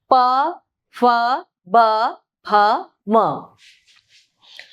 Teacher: प फ ब भ म ये ओष्ठय है। ओष्ठय मतलब होठों को लगाकर।